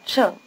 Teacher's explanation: Your tongue has to shift gears, so to speak, between the two syllables. It's forward for the first syllable, 先, and retracted for the second, 生.